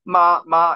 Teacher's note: it's all a high, steady tone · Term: first tone